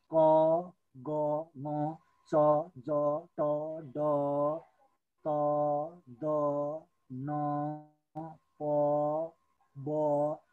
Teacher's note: अल्प प्राणमा फोक्सोबाट बाहिरिने हावा कम मात्रामा निस्की उच्चारण हुने वर्ण